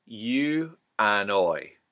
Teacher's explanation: the eye becomes something closer to an oi